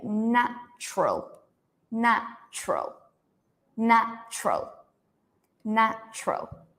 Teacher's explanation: In English, remember this TU sounds like ch.